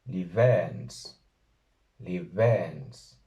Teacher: hay que pronunciarla con los labios, pero casi como una V, no como una B normal plosiva, sino como una B acercándose a una V. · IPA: / li.'βɛns /